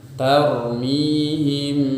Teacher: cara membacanya adalah syafatain kita berada di makroj huruf ba kemudian ketika makhraj atau alat ucap kita berada di huruf ba maka disertai dengung dengung yang muncul dari huruf mim nya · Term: Ikhfa Syafawi